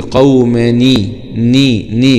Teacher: اذا التقى ساكنان في اللغه العربيه يتم التخلص من الساكن الاول، فهنا بنكسر الساكن الاولاني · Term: كسرنا النون